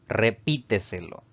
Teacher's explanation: la mayor fuerza de voz al pronunciarla recae en la sílaba llamada antes de la antepenúltima contando derecha izquierda es una sobreesdrújula y va a llevar tilde siempre y nuestro